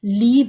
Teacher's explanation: تو یا کی جو ساؤنڈ ہوتی ہے ای ساؤنڈ آتی ہے. لام زیر شا لی لے نہیں کہیں گے.